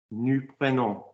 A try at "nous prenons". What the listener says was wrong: Why are you saying prenons? Prenons, I told you prenons. I told you the vowel I wanted and I gave it in one go. Why are you saying it in 2 words and why are you saying prenon? Because I didn't say prenon, did I?